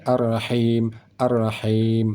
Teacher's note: kalimat arrahim Ha ini sama dengan Ha ini arrahim arrahim sama Ha ini di tengah kerongkongan Ha ini juga di tengah kerongkongan Ha ini saat kita baca · Ha ini di tengah kerongkongan Ha ini juga di tengah kerongkongan Ha ini saat kita baca ada keluar angin halus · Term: huruf ha